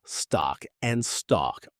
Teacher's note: stock and stalk are pronounced identically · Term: cot-caught merger